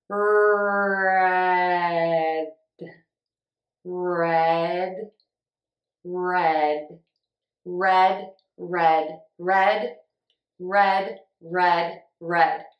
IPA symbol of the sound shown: rɛd